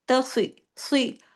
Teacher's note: اس میں سواد کی آواز سواد کی طرح نکلے گی، سین کی طرح نہیں نکلے گی